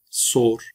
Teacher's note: Kürtçe'de S bazen Arapçadaki sat harfi gibi biraz daha vurgulu bir şekilde telaffuz edilebilir